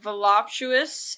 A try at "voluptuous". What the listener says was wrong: There's no M in it.